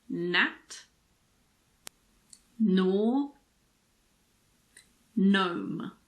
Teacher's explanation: we don't pronounce the G if it's followed by an N at the beginning of a word